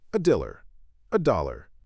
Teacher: Amphibrochic, unstressed, stressed, unstressed.